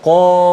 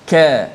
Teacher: Qa, adapun ka dia dekat makhrajnya tetapi sifatnya nipis, tidak terangkat pangkal lidah